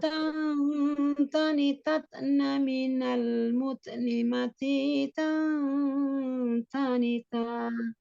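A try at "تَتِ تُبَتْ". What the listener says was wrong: Umi tidak stabil di tak sukunnya. Tak sukunnya itu kan ada tiga ya.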